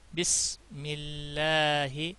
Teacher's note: سین کا خاص خیال رکھنا، یہ حروف صفیریہ میں سے ہے، اس کی آواز تیز نکلے گی